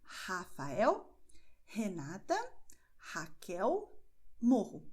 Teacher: é a sua garganta que expulsa o ar, mas a língua ela está quietinha, não faça nada com ela, ok? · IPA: [h]